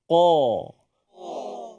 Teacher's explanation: kita punya pangkal lidah ini terangkat ke atas suara Tebal juga datang di situ